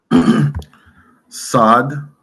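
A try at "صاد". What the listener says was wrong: instead of sad, be more more of a rounded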